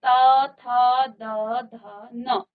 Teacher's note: आपकी जीभ कहाँ लग रही है, आपके दांत पर लग रही है, इसलिए इनका उच्चारण स्थान दंत है और इनको कहा जाता है दंत्य।